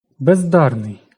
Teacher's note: Д дзвінкий, з дзвінкий, обидва зубні. Ніякого уподібнення не відбувається.